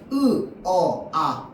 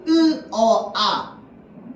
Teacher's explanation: 혀가 턱을 끌고 내려가서 으어 아 턱이 점점점 낮아져요.